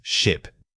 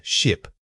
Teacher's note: keep the sound tight and quick. Your jaw should remain relatively closed during that primary vowel sound. We are aiming for a brief burst of air rather than a drawn out tone.